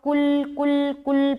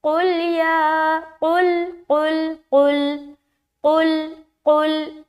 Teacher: قاف ہے نا اس کو بالکل حلق سے ادا کرنا ہے